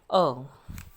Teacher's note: Produced with the tongue as low and as far back in the mouth as possible.